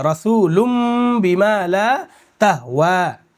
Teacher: ساکن وہ نون جس پر جزم ہو اس کے بعد با آئے تو اس نون کو میم سے بدل دیں گے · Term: اقلاب